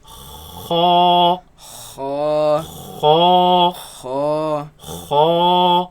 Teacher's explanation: So the root of the tongue raises against the uvula, and the commotion is what makes this sound. Now it should be soft sound.